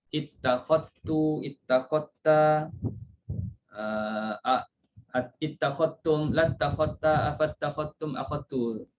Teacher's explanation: Di sini kalimah akhadha ittakhadha, lafaz ini sama ada dia bersambung dengan dhamir al-jam'i, ganti nama yang menunjukkan kepada ramai, kalau baca akhadtum ittakhadtum ke, atau ifrad ittakhadta ke, maka bagi bacaan raw diidghamkan huruf dal ke dalam ta. Mana-mana tempatlah dalam Quran dal itu masukkan ke dalam huruf ta.